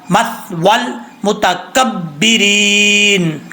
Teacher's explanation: اس یا کو بھائی نہیں پڑھیں گے، صرف واو کو لام کے ساتھ ملائیں گے، یا کو پڑھنے کی ضرورت نہیں ہے، یا کو بھی اور الف کو بھی پڑھنے کی ضرورت نہیں ہے۔